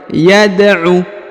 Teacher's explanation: perhatikan huruf Dal berharakat sukun maka dibaca pantul